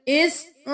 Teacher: حمزہ زیر یا ای 1 الف کے برابر کھینچیں گے